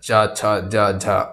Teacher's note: च वर्ग का उच्चारण मुंह के किस भाग से होता है, तालु से होता है च वर्ग का उच्चारण।